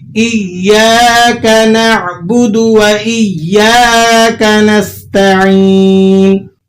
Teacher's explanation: تو تشدید والا حرف یہ 2 حرفوں کے قائم مقام ہوتا ہے، یہاں پر دو یا ہیں دراصل، پہلی یا ساکن ہے اور دوسری یا متحرک ہے. تو آپ نے پہلی یا جو ساکنہ ہے وہاں کیا کرنا ہے، آواز کو بند کر لینا ہے، اور دوسری یا جو متحرک ہے وہاں پر آواز کو چھوڑ کر پڑھنا ہے. جیسا کہ مشدد حرف کے بارے میں قاعدہ ہے کہ اسے ادا کیا جاتا ہے سختی کے ساتھ ذرا رک کر.